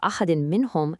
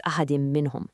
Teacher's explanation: If a word ends with a specific end sound and the very next word starts with one of the letters you see on the left you merge them together with a nasal sound called a ghunnah